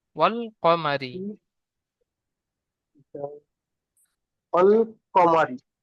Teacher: রয়ের নিচে জের এসেছে, তাই রকে বারিক করে পড়তে হয়।